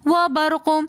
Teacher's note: قاف کی آواز پلٹ کر واپس آئے گی ساکن ہولے کی حالت میں۔